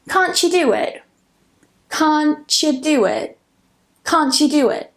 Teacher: instead of saying can't you do it, I combine them to create a ch.